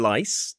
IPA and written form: laɪs (lice)